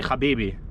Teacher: we have Arabic words in Hebrew, but we don't do the h, we just do the ch sound